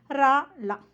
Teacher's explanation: நாவினது நுனி மேல்நோக்கிச் சென்று அன்னத்தை தடவும் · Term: ரகரம் லகரம்